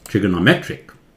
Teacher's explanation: ट्रिगोनो थोड़ा flat, मेट्रिक जोर से